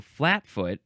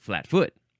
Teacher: you're emphasizing the first syllable I think and then sometimes you can emphasize the second syllable